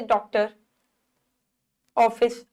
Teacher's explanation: इसका उच्चारण आ तथा औ के मध्य की ध्वनि यानी कि औ के रूप में होता है। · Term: आगत